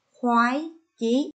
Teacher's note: Khi phát âm vần oai và tiếng khoái, các con phải tròn môi.